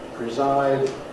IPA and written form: prɪˈzaɪd (preside)